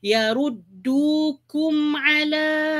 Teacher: Yaruddu, du di sini dua harakat ya, iaitu mad asli dua harakat, dukum ala. Mim mati berjumpa dengan ain. Yang ini jangan didengungkan, kena baca jelas. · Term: izhar halqi